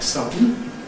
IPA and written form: ˈsʌdn̩ (sudden)